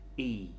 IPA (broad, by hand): i: